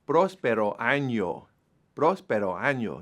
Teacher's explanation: the accent is on the first part of the word, the first syllable on the O